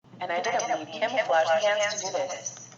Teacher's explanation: 프가 대기음이기 때문에 쉬에 가까운 음으로 들리겠죠